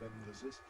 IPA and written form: ˈem̪vəsɪs (emphasis)